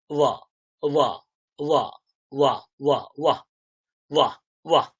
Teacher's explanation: এই ব কিন্তু দুটো ঠোঁট জুড়ে উচ্চারিত হবে না। · উপরের দাঁত নিচের ঠোঁট, উপরের দাঁত নিচের ঠোঁট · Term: অন্তঃস্থ